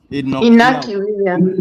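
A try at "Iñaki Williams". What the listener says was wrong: The N is actually pronounced as Y.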